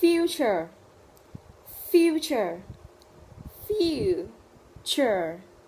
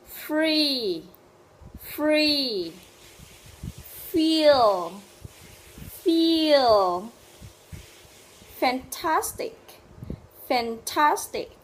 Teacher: Cùng bắt đầu với các phụ âm đầu tiên, đó là các phụ âm răng môi. Các phụ âm này có đặc điểm là chúng ta sẽ tạo ra âm thanh bằng cách ma sát giữa răng hàm trên và môi hàm dưới.